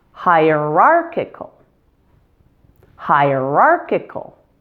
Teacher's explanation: primary stress is now on R, with a secondary stress on high.